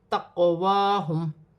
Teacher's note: قاف ساکن ہے، حروف قلقلہ میں سے ہے، قلقلے کے ساتھ ادا کیا جائے گا